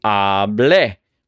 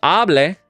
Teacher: with no accent mark, so the stress naturally falls on that front syllable with that A